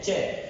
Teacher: जैसे हम च बोलते हैं च, तो हमारी जो जीवा है ये धरातल से उठकर मसूड़ों के ठीक ऊपर जाती है तालु के पास। यहां से उच्चारण होता है च। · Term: च वर्ग का उच्चारण